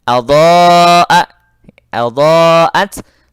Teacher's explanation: Dha ini panjang karena dia ya huruf madnya berada pada satu kata atau satu kalimah dengan huruf hamzah, sehingga dibaca panjang 5 sampai 6 harakat. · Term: mad wajib